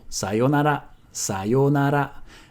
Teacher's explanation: sometimes you also hear it with a short yo